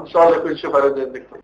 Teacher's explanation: خدتوا بالكم من صوت الخنفه بتاعته شكلها عامل ازاي؟ كأن مناخيره مكتومه تماما